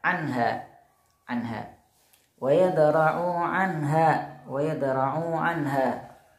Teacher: anha nun sukun bertemu ha itu dibaca jelas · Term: idhar